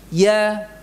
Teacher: Kemudian ucapkan ya-nya dengan sempurna dari tengah lidah. Ya. Jadi bukan nadiyah, dia.